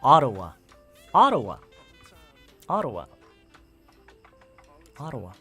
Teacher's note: So the stress is on the first syllable